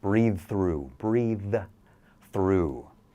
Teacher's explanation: So if that next word starts with the same sound, the TH, breathe through, you can connect those sounds. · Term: TH sound